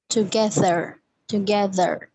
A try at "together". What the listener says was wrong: All right, now you are pronouncing it like bit American, लेकिन अगर आप British में करोगे तो R ड्रॉप करोगे, so that will be together, and in American it will be together, right?